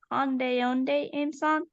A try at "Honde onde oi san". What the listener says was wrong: Almost. You forgot the oi for again.